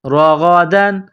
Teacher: را کے اوپر زبر ہے تو را کو موٹا کرنا ہے